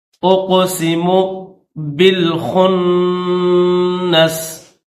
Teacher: قاف کو ظاہر کریں گے، حروف قلقلہ میں سے ہے